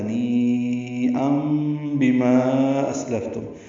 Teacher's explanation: حمزہ الف مدہ کے بعد حمزہ دوسرے کلمے میں ہونے کی وجہ سے مد منفصل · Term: مد متصل